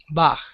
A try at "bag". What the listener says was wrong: Not Bach. Listen. Bag. The G is never a H in English.